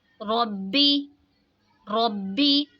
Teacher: یہاں پہ دیکھیں جی را پہ زبر ہے، را کو موٹا پڑھیں گے، یا ساکن سے پہلے زیر ہے تو یا ساکن یہاں پہ یا مدہ ہوگا، اس لیے اس کو کھینچ کے پڑھیں گے۔ ربی، رو، با زبر رب، با زیر بی، ربی، ہا کھڑی زیر ہی، ربی ہی۔ · را پہ زبر ہے تو را کو موٹا پڑھیں گے، با میں بھی قلقلہ ہوگا